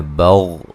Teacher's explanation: غین کو موٹا ادا کرنا ہے، ہلانا نہیں ہے